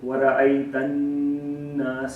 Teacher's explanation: with the gunna rule, you have to prolongate the noon for 2 to 3 seconds, and no longer than that